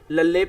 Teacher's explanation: जीभ द नोक तालू दे नाल लगदी है अते हवा पासियो द बाहर आंदी है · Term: पार्श्विक